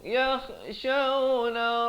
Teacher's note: Allazina kha di hujung kerongkong, yakhshawna